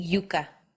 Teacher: the middle of the tongue is right next to the roof of the mouth Yuka or it may even touch the roof of the mouth